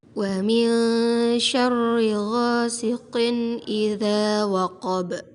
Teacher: Suara kasrotain bertemu fathah dibaca terang, jelas, dan pendek. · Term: idhar halqi